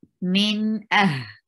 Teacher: Kathirum min, and for noon there is izhar, because after noon sakina you find huruf halaqi, and that makes noon sakina a very clear sound